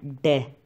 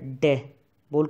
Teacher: जीव है पहले तो तालू पर जाती है टकरा के और फिर झटके के साथ नीचे आती है पहले तो ऊपर टकराए गी मूर्धा के ऊपर और फिर झटके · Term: उत्क्षिप्त व्यंजन